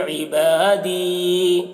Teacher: یا مدہ ہے تو کھینچ کر رکیں گے